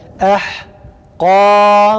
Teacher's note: Kaf kalın, ba ince.